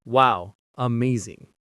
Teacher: you don't say it with excitement, you say it flat with no emotion. "Wow, amazing." That flat tone signals that you mean the opposite. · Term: falling flat tone